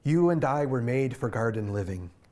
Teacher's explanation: it's trochaic pentameter five beats of pairs of stressed and unstressed syllables